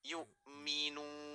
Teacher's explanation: Kita ambil 4 harakat, yang mana hukumnya adalah mad arid li sukun ya.